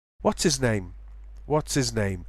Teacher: No one would even notice if you drop the H there. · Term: H dropping